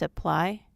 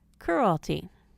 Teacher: the letter Y will have its normal long I sound when it's accented but will have the long e sound in its unaccented syllables